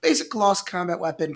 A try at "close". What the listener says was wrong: Kloss? You said Kloss. No, close. The word is close. You said Kloss.